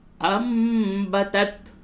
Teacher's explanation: انبتت، نون ساکن کے بعد با آوے، جب بھی نون ساکن اور تنوین کے بعد با آوے تو اس وقت اس کو نون ساکن اور تنوین کی آواز کو میم سے، اس چھوٹی سی میم سے بدل کر کے بولتے ہیں غنے کے ساتھ، اس کو قلب کہتے ہیں، تو اس جگہ پہ قلب ہوگا.